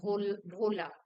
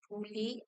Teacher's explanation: Next set is for o and u, that is mid-high and high. Bhola, to forget, with the mid-high.